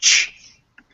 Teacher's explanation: CH is kind of equal to a T plus an SH sound.